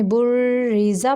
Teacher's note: یہ را جو ہے یہ باریک پڑھا جائے گا کیونکہ اس کے نیچے زیر ہے، اس لیے تو یہ وصل کی صورت میں بریزا پڑھیں گے اور وقف کی صورت میں بریز۔